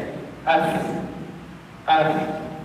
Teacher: Dan kita dapat ketahui af sebutan fa keluar juga dekat bibir. Af menggunakan bibirlah. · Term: huruf fa